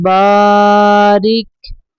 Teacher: را کے نیچے زیر ہے، را کو باریک پڑھیں گے